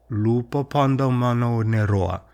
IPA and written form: lu.pɒ.pa.ndo.ma.nau.ne.ro.ɒ (Lupâpadomanaunetoâ)